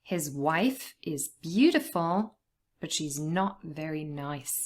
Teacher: it's also important to stress the word not because it's obviously changing the meaning